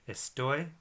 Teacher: the stress is on the last part of the word